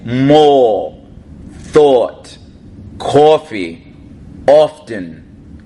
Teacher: with a Jersey accent from the north we don't say ah it becomes more oh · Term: North Jersey accent